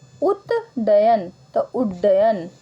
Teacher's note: जब त के बाद ड या ढ आ जाए तो त का ड हो जाता है।